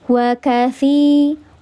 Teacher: Dibaca panjang 2 harakat, namanya mad tabi'i